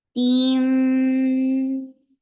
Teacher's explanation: And meme will get sifa of kunna because whenever meme and noon are with tashdid, they get akmal kunna. So keep the sound in your nose for a longer time. Team. And then for dhamma, circle your lips and then attach with hamza, which will cut off the sound very abruptly, very sharply, because hamza is among sharp letters, shidda letters.